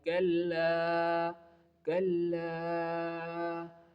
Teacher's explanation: This letter kaf never fills your mouth and never give a thick sound. In the first example, kalla, the light front of the mouth sound like kalla, kalla.